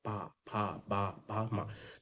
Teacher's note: पा फ बा भा और मा मा इसमें क्या होता है ओट पूरा ओट बंद होता है फिर खुलता है